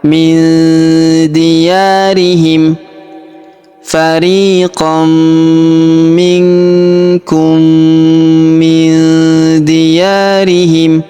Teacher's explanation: Huruf nun sukun bertemu huruf D, maka nun sukun melebur ke huruf D. Kita baca dengung dan samar. Dengungnya kita tahan dua sampai 3 harakat.